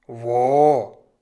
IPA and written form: vo (wo)